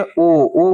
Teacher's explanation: ओ बोल रहे होंगे तो आपके जो होठ है वो एक वृत्त के आकार की तरह बन जा रहा होगा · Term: वृत्तामुखी